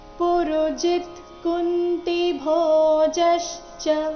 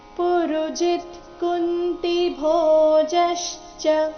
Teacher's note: ಪುರುಜಿತ್ ಪುರುಜಿ ಆದ ನಂತರ ಅರ್ಧ ತಕಾರ ಇದೆ ಪುರುಜಿತ್ ಕುಂತಿ ಕುಂತಿ ಭೋಜಶ್ಚ ಇಲ್ಲಿ ಭೋ ಮಹಾಪ್ರಾಣ ದೀರ್ಘ ಬರಬೇಕು ಜ ಮೇಲೆ ಆಘಾತ ಬರಬೇಕು